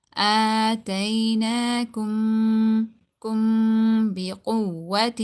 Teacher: But here we're going to be doing ikhfa. We're going to be hiding the sound of this meme into the nose.